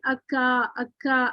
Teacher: नरम और सख्त दोनों तालु से लग रहा है